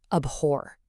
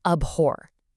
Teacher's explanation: You stress that second syllable